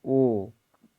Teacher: कंठ और ओष्ठ दोनों से आवाज निकल रही है